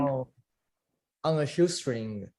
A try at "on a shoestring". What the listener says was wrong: That's it. That was much better. That was much better.